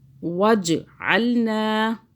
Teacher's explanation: جیم پہ قلقلہ کیا، جھٹکا دیا